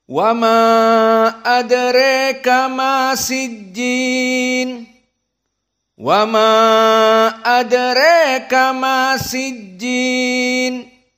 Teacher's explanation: Maka Al-Kisai seperti jumhur tawassut, namun ada imalah. Imalah pada apa? Pada adraka menjadi adreka. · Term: al-imalah al-kubra